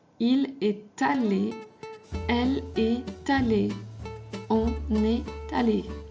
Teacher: il est allé, we make the link with the T